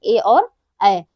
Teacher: ए ऐ जो है ये कंठ और तालव्य से उच्चारित होते हैं। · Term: कंठ तालव्य